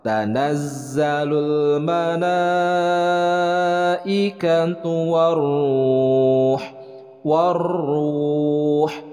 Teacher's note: Alif lam syamsiyah, kemudian ra-nya ra tabkhim, dibacanya tebal. Nah, itu adalah mad tabi'i, kemudian huruf ha.